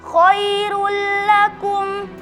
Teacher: Terdapat dalam kata khairul lakum karena ada dommatain bertemu dengan huruf lam, dibaca dengan dileburkan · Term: idgham bila gunnah